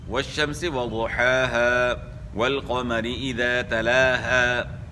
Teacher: تو اسی طرح حروف مدہ جو ہے آخر میں ہے والشمس وضحاها، یہاں الف مدہ ہے تو یہ تو ساکن نہیں ہو سکتا، الف تو ویسے ہی ساکن ہوتا ہے، یعنی وقف میں الف مدہ جو ہے وہ ادا ہوگا. وقف میں جس طرح یعنی اصلی حالت میں جس طرح ہے اسی طرح وقف میں بھی پڑھا جائے گا.